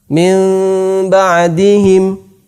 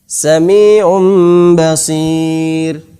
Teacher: 2 bibir ini tidak ditempelkan secara sempurna, bukan mim ba'di, akan tetapi agak ada renggangan sedikit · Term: iqlab